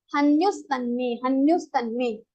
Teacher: So after visarga you have ta, before visarga you have vowel. So the visarga sound will be converted into sa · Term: visarga sandhi